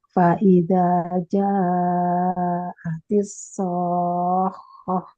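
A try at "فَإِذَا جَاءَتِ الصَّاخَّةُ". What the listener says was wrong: Aduh, jadi dua harokat Hati-hati. Jangan kekecoh ya. Ja-nya 4 harokat. So-nya 6 harokat. Ini pokoknya tasdid.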